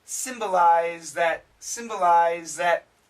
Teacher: the z canceled the th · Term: cancellation